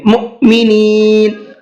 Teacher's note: مؤمنین میں حمزہ ساکن ہے تو حمزہ ساکن کو جھٹکے کے ساتھ میں پڑھیں گے۔